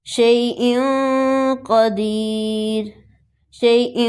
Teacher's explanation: جب بھی نون ساکن نون تنوین کے بعد ان 15 حروف میں سے کوئی آئے گا تو ہم نون ساکن نون تنوین کو ادا کرتے ہوئے اخفاء کریں گے، یعنی نون ساکن نون تنوین کی آواز کو ناک میں چھپا لیں گے۔ اب یہ 2 مثالیں ہیں، ایک ہے تنوین اور دوسری نون ساکن کی، اور دونوں کے بعد اخفاء لیٹر قاف استعمال ہوا ہے۔